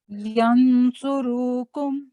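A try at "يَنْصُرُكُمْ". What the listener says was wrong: रू की आवाज को आपने लंबा कर दिया था और यहाँ आपने फोकस करना है इख्फा को भी, क्योंकि आगे सौद है ना।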